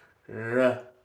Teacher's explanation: for the R, your tongue tip's not touching, but the sides are.